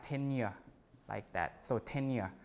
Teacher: you insert the glide sound, Y, between the unstressed vowel in medial position and the final syllable